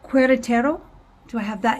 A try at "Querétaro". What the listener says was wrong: Almost, because the U is silent, so it's Querétaro.